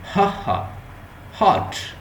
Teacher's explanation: ये जो हा साउंड है ये हमारे वो हलक से निकलती है, जिसे उसे कहते हैं यूवला, और यूवला भी कहते हैं, विलम भी कहते हैं, इस तरह की साउंड, व्हीलर साउंड भी कहते हैं।